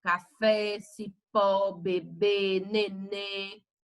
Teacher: a sílaba tônica é a última que é oxítona